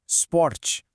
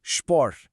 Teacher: Quando uma palavra começa com SP ou ST, a gente coloca um som de chã na frente.